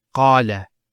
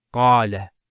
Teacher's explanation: Notice the elongation of the A sound. Qala. Not qala, qala. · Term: long vowel